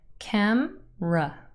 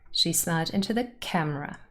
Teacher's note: camera has two syllables, cam-ra, and the first syllable is stressed. You can see this in a dictionary because there's a little apostrophe at the start of the first syllable, and that indicates primary stress.